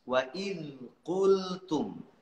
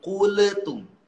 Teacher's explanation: Jangan sampai kuletum. Gak ada kolkolah, gak ada pantulan.